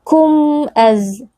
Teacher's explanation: di sini huruf mim bertemu dengan Hamzah berlaku hukum izhar syafawi huruf mim dibaca jelas tanpa dengung yang dipanjangkan